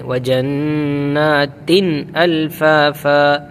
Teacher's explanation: تن اظہار ہوگا یہاں پر، تن غنہ نہیں کریں گے